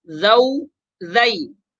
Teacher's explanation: حروف لین کو پڑھیں گے اور بغیر کھینچے پڑھیں گے